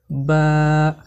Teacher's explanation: বা হরফকে দুই ঠোঁটের ভিজা থেকে পড়তে হয়।